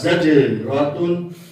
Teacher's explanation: جیم ساکن ہے تو اس میں قلقلہ ہوگا. زجراتن آگے طا حروف قلقلہ.